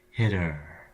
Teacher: in hitter there's a constant stream of air leaving your lungs the entire time